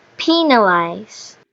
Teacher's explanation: The middle syllable, nal, is reduced, showing vowel reduction